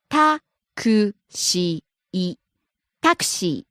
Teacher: starts high, drops second syllable C, stays low